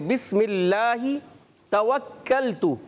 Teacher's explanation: اللہ پاک کے نام سے پہلے زیر ہے تو یہاں باریک ہے